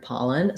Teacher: we have first syllable stress in the word pollen so the paw syllable is long and the len syllable is short and unstressed